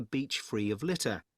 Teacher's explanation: so he put the stress on the answer, litter